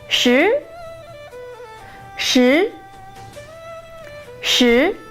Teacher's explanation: Shi is 10 in Chinese, and the shi is the second tone.